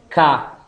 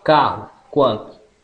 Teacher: oral oclusiva velar surda